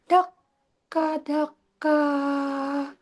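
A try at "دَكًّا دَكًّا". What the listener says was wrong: Dakang, dengung dulu, dengung dulu, baru daka.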